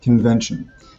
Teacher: very classic French mistake of using sounds that don't exist in English. In this case, the sound en.